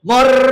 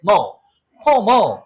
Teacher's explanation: যদি কোনো ওয়ার্ডের শেষে আর থাকে, ব্রিটিশ অ্যাকসেন্ট, আর এর সাউন্ডটা সাইলেন্ট হয়ে যাবে। তাহলে কি পর, এর আরটা বলবো না, ফোর ফোর, আর পি সাউন্ড ফ, পি সাউন্ড ফ, ফোর ফোর।